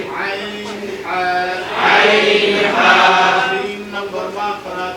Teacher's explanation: 2 number মাখরাজ, হলকের মধ্যখান হইতে